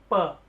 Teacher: प बोला तो मेरे पहले दोनों होठ मिले फिर खुले थे, प, तो यानी कि होठों का प्रयोग ज्यादा हुआ है इस वाले व्यंजन को बोलने में।